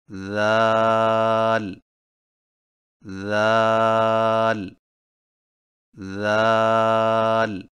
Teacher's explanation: ذال کی ادائیگی میں زبان کی نوک کو سامنے والے اوپر کے دو دانتوں کے اندرونی کناروں سے نرمی سے لگا کر باریک آواز میں پڑھیں، یعنی ذال ذال ذال۔